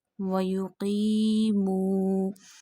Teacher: So there is a qaf and qaf has a kasra, and after kasra there is a ya sakina. So stretch it up to one finger, one alif. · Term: ya madda